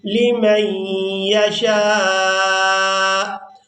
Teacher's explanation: یہاں پر آپ لوگ علامات وقف دیکھ رہے ہیں، وقف کریں گے تو وقف کی صورت میں حمزہ کو ساکن کر دیں گے، شین کو الف مدہ اور مد کی وجہ سے کھینچتے ہوئے اس حمزہ ساکن کے ساتھ ملائیں گے